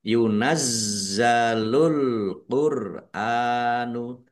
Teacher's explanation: za dibaca dobel ada tasdidnya ditekan dan ditahan biar tampak dobel